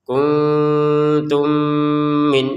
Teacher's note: Masukkan mim yang pertama dengan mim yang kedua lalu didangungkan